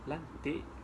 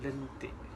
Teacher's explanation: Lantik digunakan vokal A dan lentik digunakan vokal E pepet.